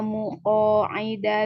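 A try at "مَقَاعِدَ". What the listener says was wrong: Mako, bukan muko Ibu, mako.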